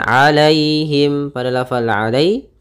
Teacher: ada ya sukun yang didahului fathah, maka ini kita namakan dengan bacaan lin, yaitu lembut dalam pelafalannya